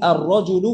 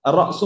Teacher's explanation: এই যে র ডিরেক্ট আসবে, লাম উচ্চারণ হবে না।